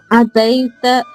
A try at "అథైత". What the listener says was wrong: దై కదమ్మా, దై కాదు, అది దై కాదు, ఠై.